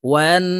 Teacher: ওয়াজিব গুন্না হরকতের বামে নুনের উপরে তাসদিদ আছে, তাই এই ওয়াও নুনের সাথে গুন্নার সহিত পড়ব।